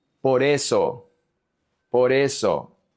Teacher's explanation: Por it has an r. It connects to the e. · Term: connections